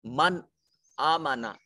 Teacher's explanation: नून साकिन के बाद हमजा हुरूफे हलकी में से है, हुरूफे इजहार में से है, यहाँ नून को जाहिर करके पढ़ेंगे।